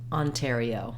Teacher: we do have some secondary stress here on this first letter O